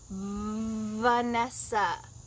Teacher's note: V. My teeth are on my bottom lip with some vibration.